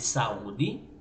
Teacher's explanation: o U, quando está acentuado, ele fica forte. Daí ele se torna uma vogal, não é uma semivogal. Esse U aqui não é semivogal porque ele está acentuado. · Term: hiato